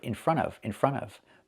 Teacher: So, when you hear it, it sounds like one word.